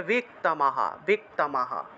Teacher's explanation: বিসর্গ থাকায় হ উচ্চারণ, আর বিসর্গ এর আগের অক্ষরের সাথে আকার আছে বিধায় সেই আকারটা সেই হয়ের সাথে যুক্ত হয়ে থাকে